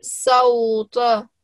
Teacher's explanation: whenever we say this ta, we make sure that we give it a round circular mouth when we say it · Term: thick letter